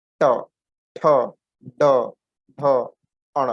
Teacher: ट बोलने के समय पर एक झटका दे रही है जीभ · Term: मूर्धन्य